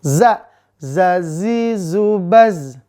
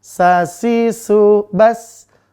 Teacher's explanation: untuk Za tipis napasnya ditahan sa tipis napasnya berhembus